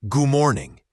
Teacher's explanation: It's not good D morning, but more like goo morning.